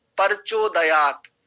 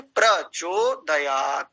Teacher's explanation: और पर बोलते हैं जबकि होना चाहिए प्र, ऐसा।